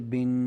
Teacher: سب سے آخر والا مخرج خشوم کا، غنہ کا، یہ وہی مخرج استعمال ہو رہا ہے تنوین کے اندر